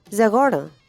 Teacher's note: it drops the standard first-person singular verbal consonant suffix in favor of a nasalized schwa